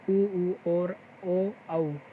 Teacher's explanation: वृत्ताकार जिसमें वर्णों का उच्चारण करते हुए हमारे ओष्ठ वृत्त की तरह गोल हो जाते हैं